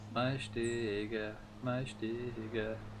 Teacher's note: all S's in Irish are pronounced SH, like a sh sound